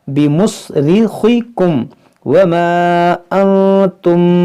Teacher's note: جیسے دیکھیں بمصرخکم، بمصرخکم، را باریک کریں گے، خا کو موٹا کریں گے، بمصرخکم وما انتم. دیکھیں یہاں پہ غنہ کریں گے، نون ساکن کے بعد تا ہے